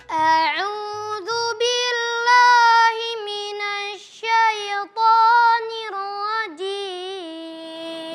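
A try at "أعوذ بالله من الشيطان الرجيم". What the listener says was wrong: Ya, jangan ditahan. Minasya.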